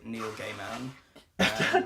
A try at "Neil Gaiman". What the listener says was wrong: Don't pronounce it like that. Neil Gaiman. You said it like two separate, like it's hyphenated or something. like you're not describing him to a blind guy. Gay man.